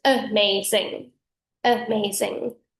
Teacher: The M only occurs in the one syllable, not both. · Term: masc style